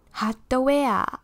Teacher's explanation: it is a big ah at the back